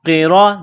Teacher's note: را کے اوپر زبر ہے تو را کو موٹا کرنا ہے